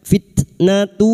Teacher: huruf ta yang memiliki sifat hamas dan siddah, maka pada saat disukun bunyinya fitnatu